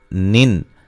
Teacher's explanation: نون تنوین کا اظہار ہے، غنہ نہیں کریں گے